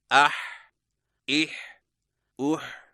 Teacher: हा हलक में दबा हुआ सांस। अदायगी के वक्त जुबान की जड़ को हलक की तरफ मजबूती से दबाते हुए अदा करें।